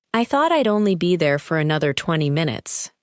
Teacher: Notice I would becomes I'd, and the sentences connect smoothly. The speaker does not pause after every word.